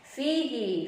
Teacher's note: makhrajul hurufnya punggung bibir bawah menempel pada gigi seri atas ya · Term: fa